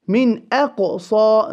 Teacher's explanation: The qaf will hold qalqala.